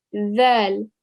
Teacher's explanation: I'm getting the tip of the tongue and I'm placing it in between my top and bottom teeth